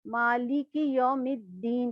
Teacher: میم کو دال میں ملا کے پڑھیں گے اور الف اور لام دونوں نہیں پڑھا جائے گا